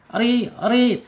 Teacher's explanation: Ro ini kasrah harakatnya dibaca tipis ya, tetapi tetap getarannya tidak boleh lebih dari dua ya. Ri ri tipis dibacanya. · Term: tarkik